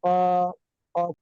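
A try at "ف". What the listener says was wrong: টান, তিন আলিফ টান আছে।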